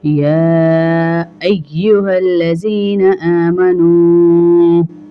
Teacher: اس یا کو کھینچیں گے 3 الف کے برابر، کیونکہ اس کے اوپر جو ہے چھوٹا مد ڈالا ہوا ہے تو اس کو ہم کھینچیں گے اور کھڑا زبر بھی ہے۔